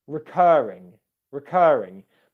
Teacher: My R sound is very quiet in those two syllables because the syllables themselves are quiet. All the stress on the word is on the second syllable.